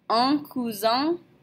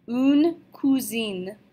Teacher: Remember, an E on the end of nasal combinations makes them not nasal anymore. So we go from un cousin with two nasals to une cousine with no nasals whatsoever.